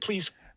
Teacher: Because this final Z is actually pretty much devoiced. There's a little bit here that looks like it's voiced though.